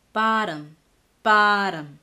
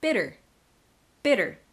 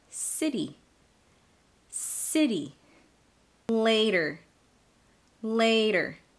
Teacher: the t is between two vowels the second one being unstressed so i make the flap sound instead of the true t